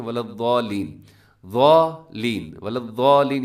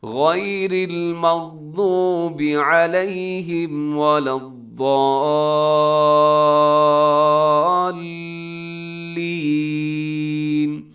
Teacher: اپنے ضاد کو آگے لام کے ساتھ ضرور ملانا ہے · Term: تشدید